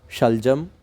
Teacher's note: मूर्धन्य और दंत्य श स और स इस तरह होता है जो श है शलजम उसमें जीव तालू को स्पर्श करती है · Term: तालव्य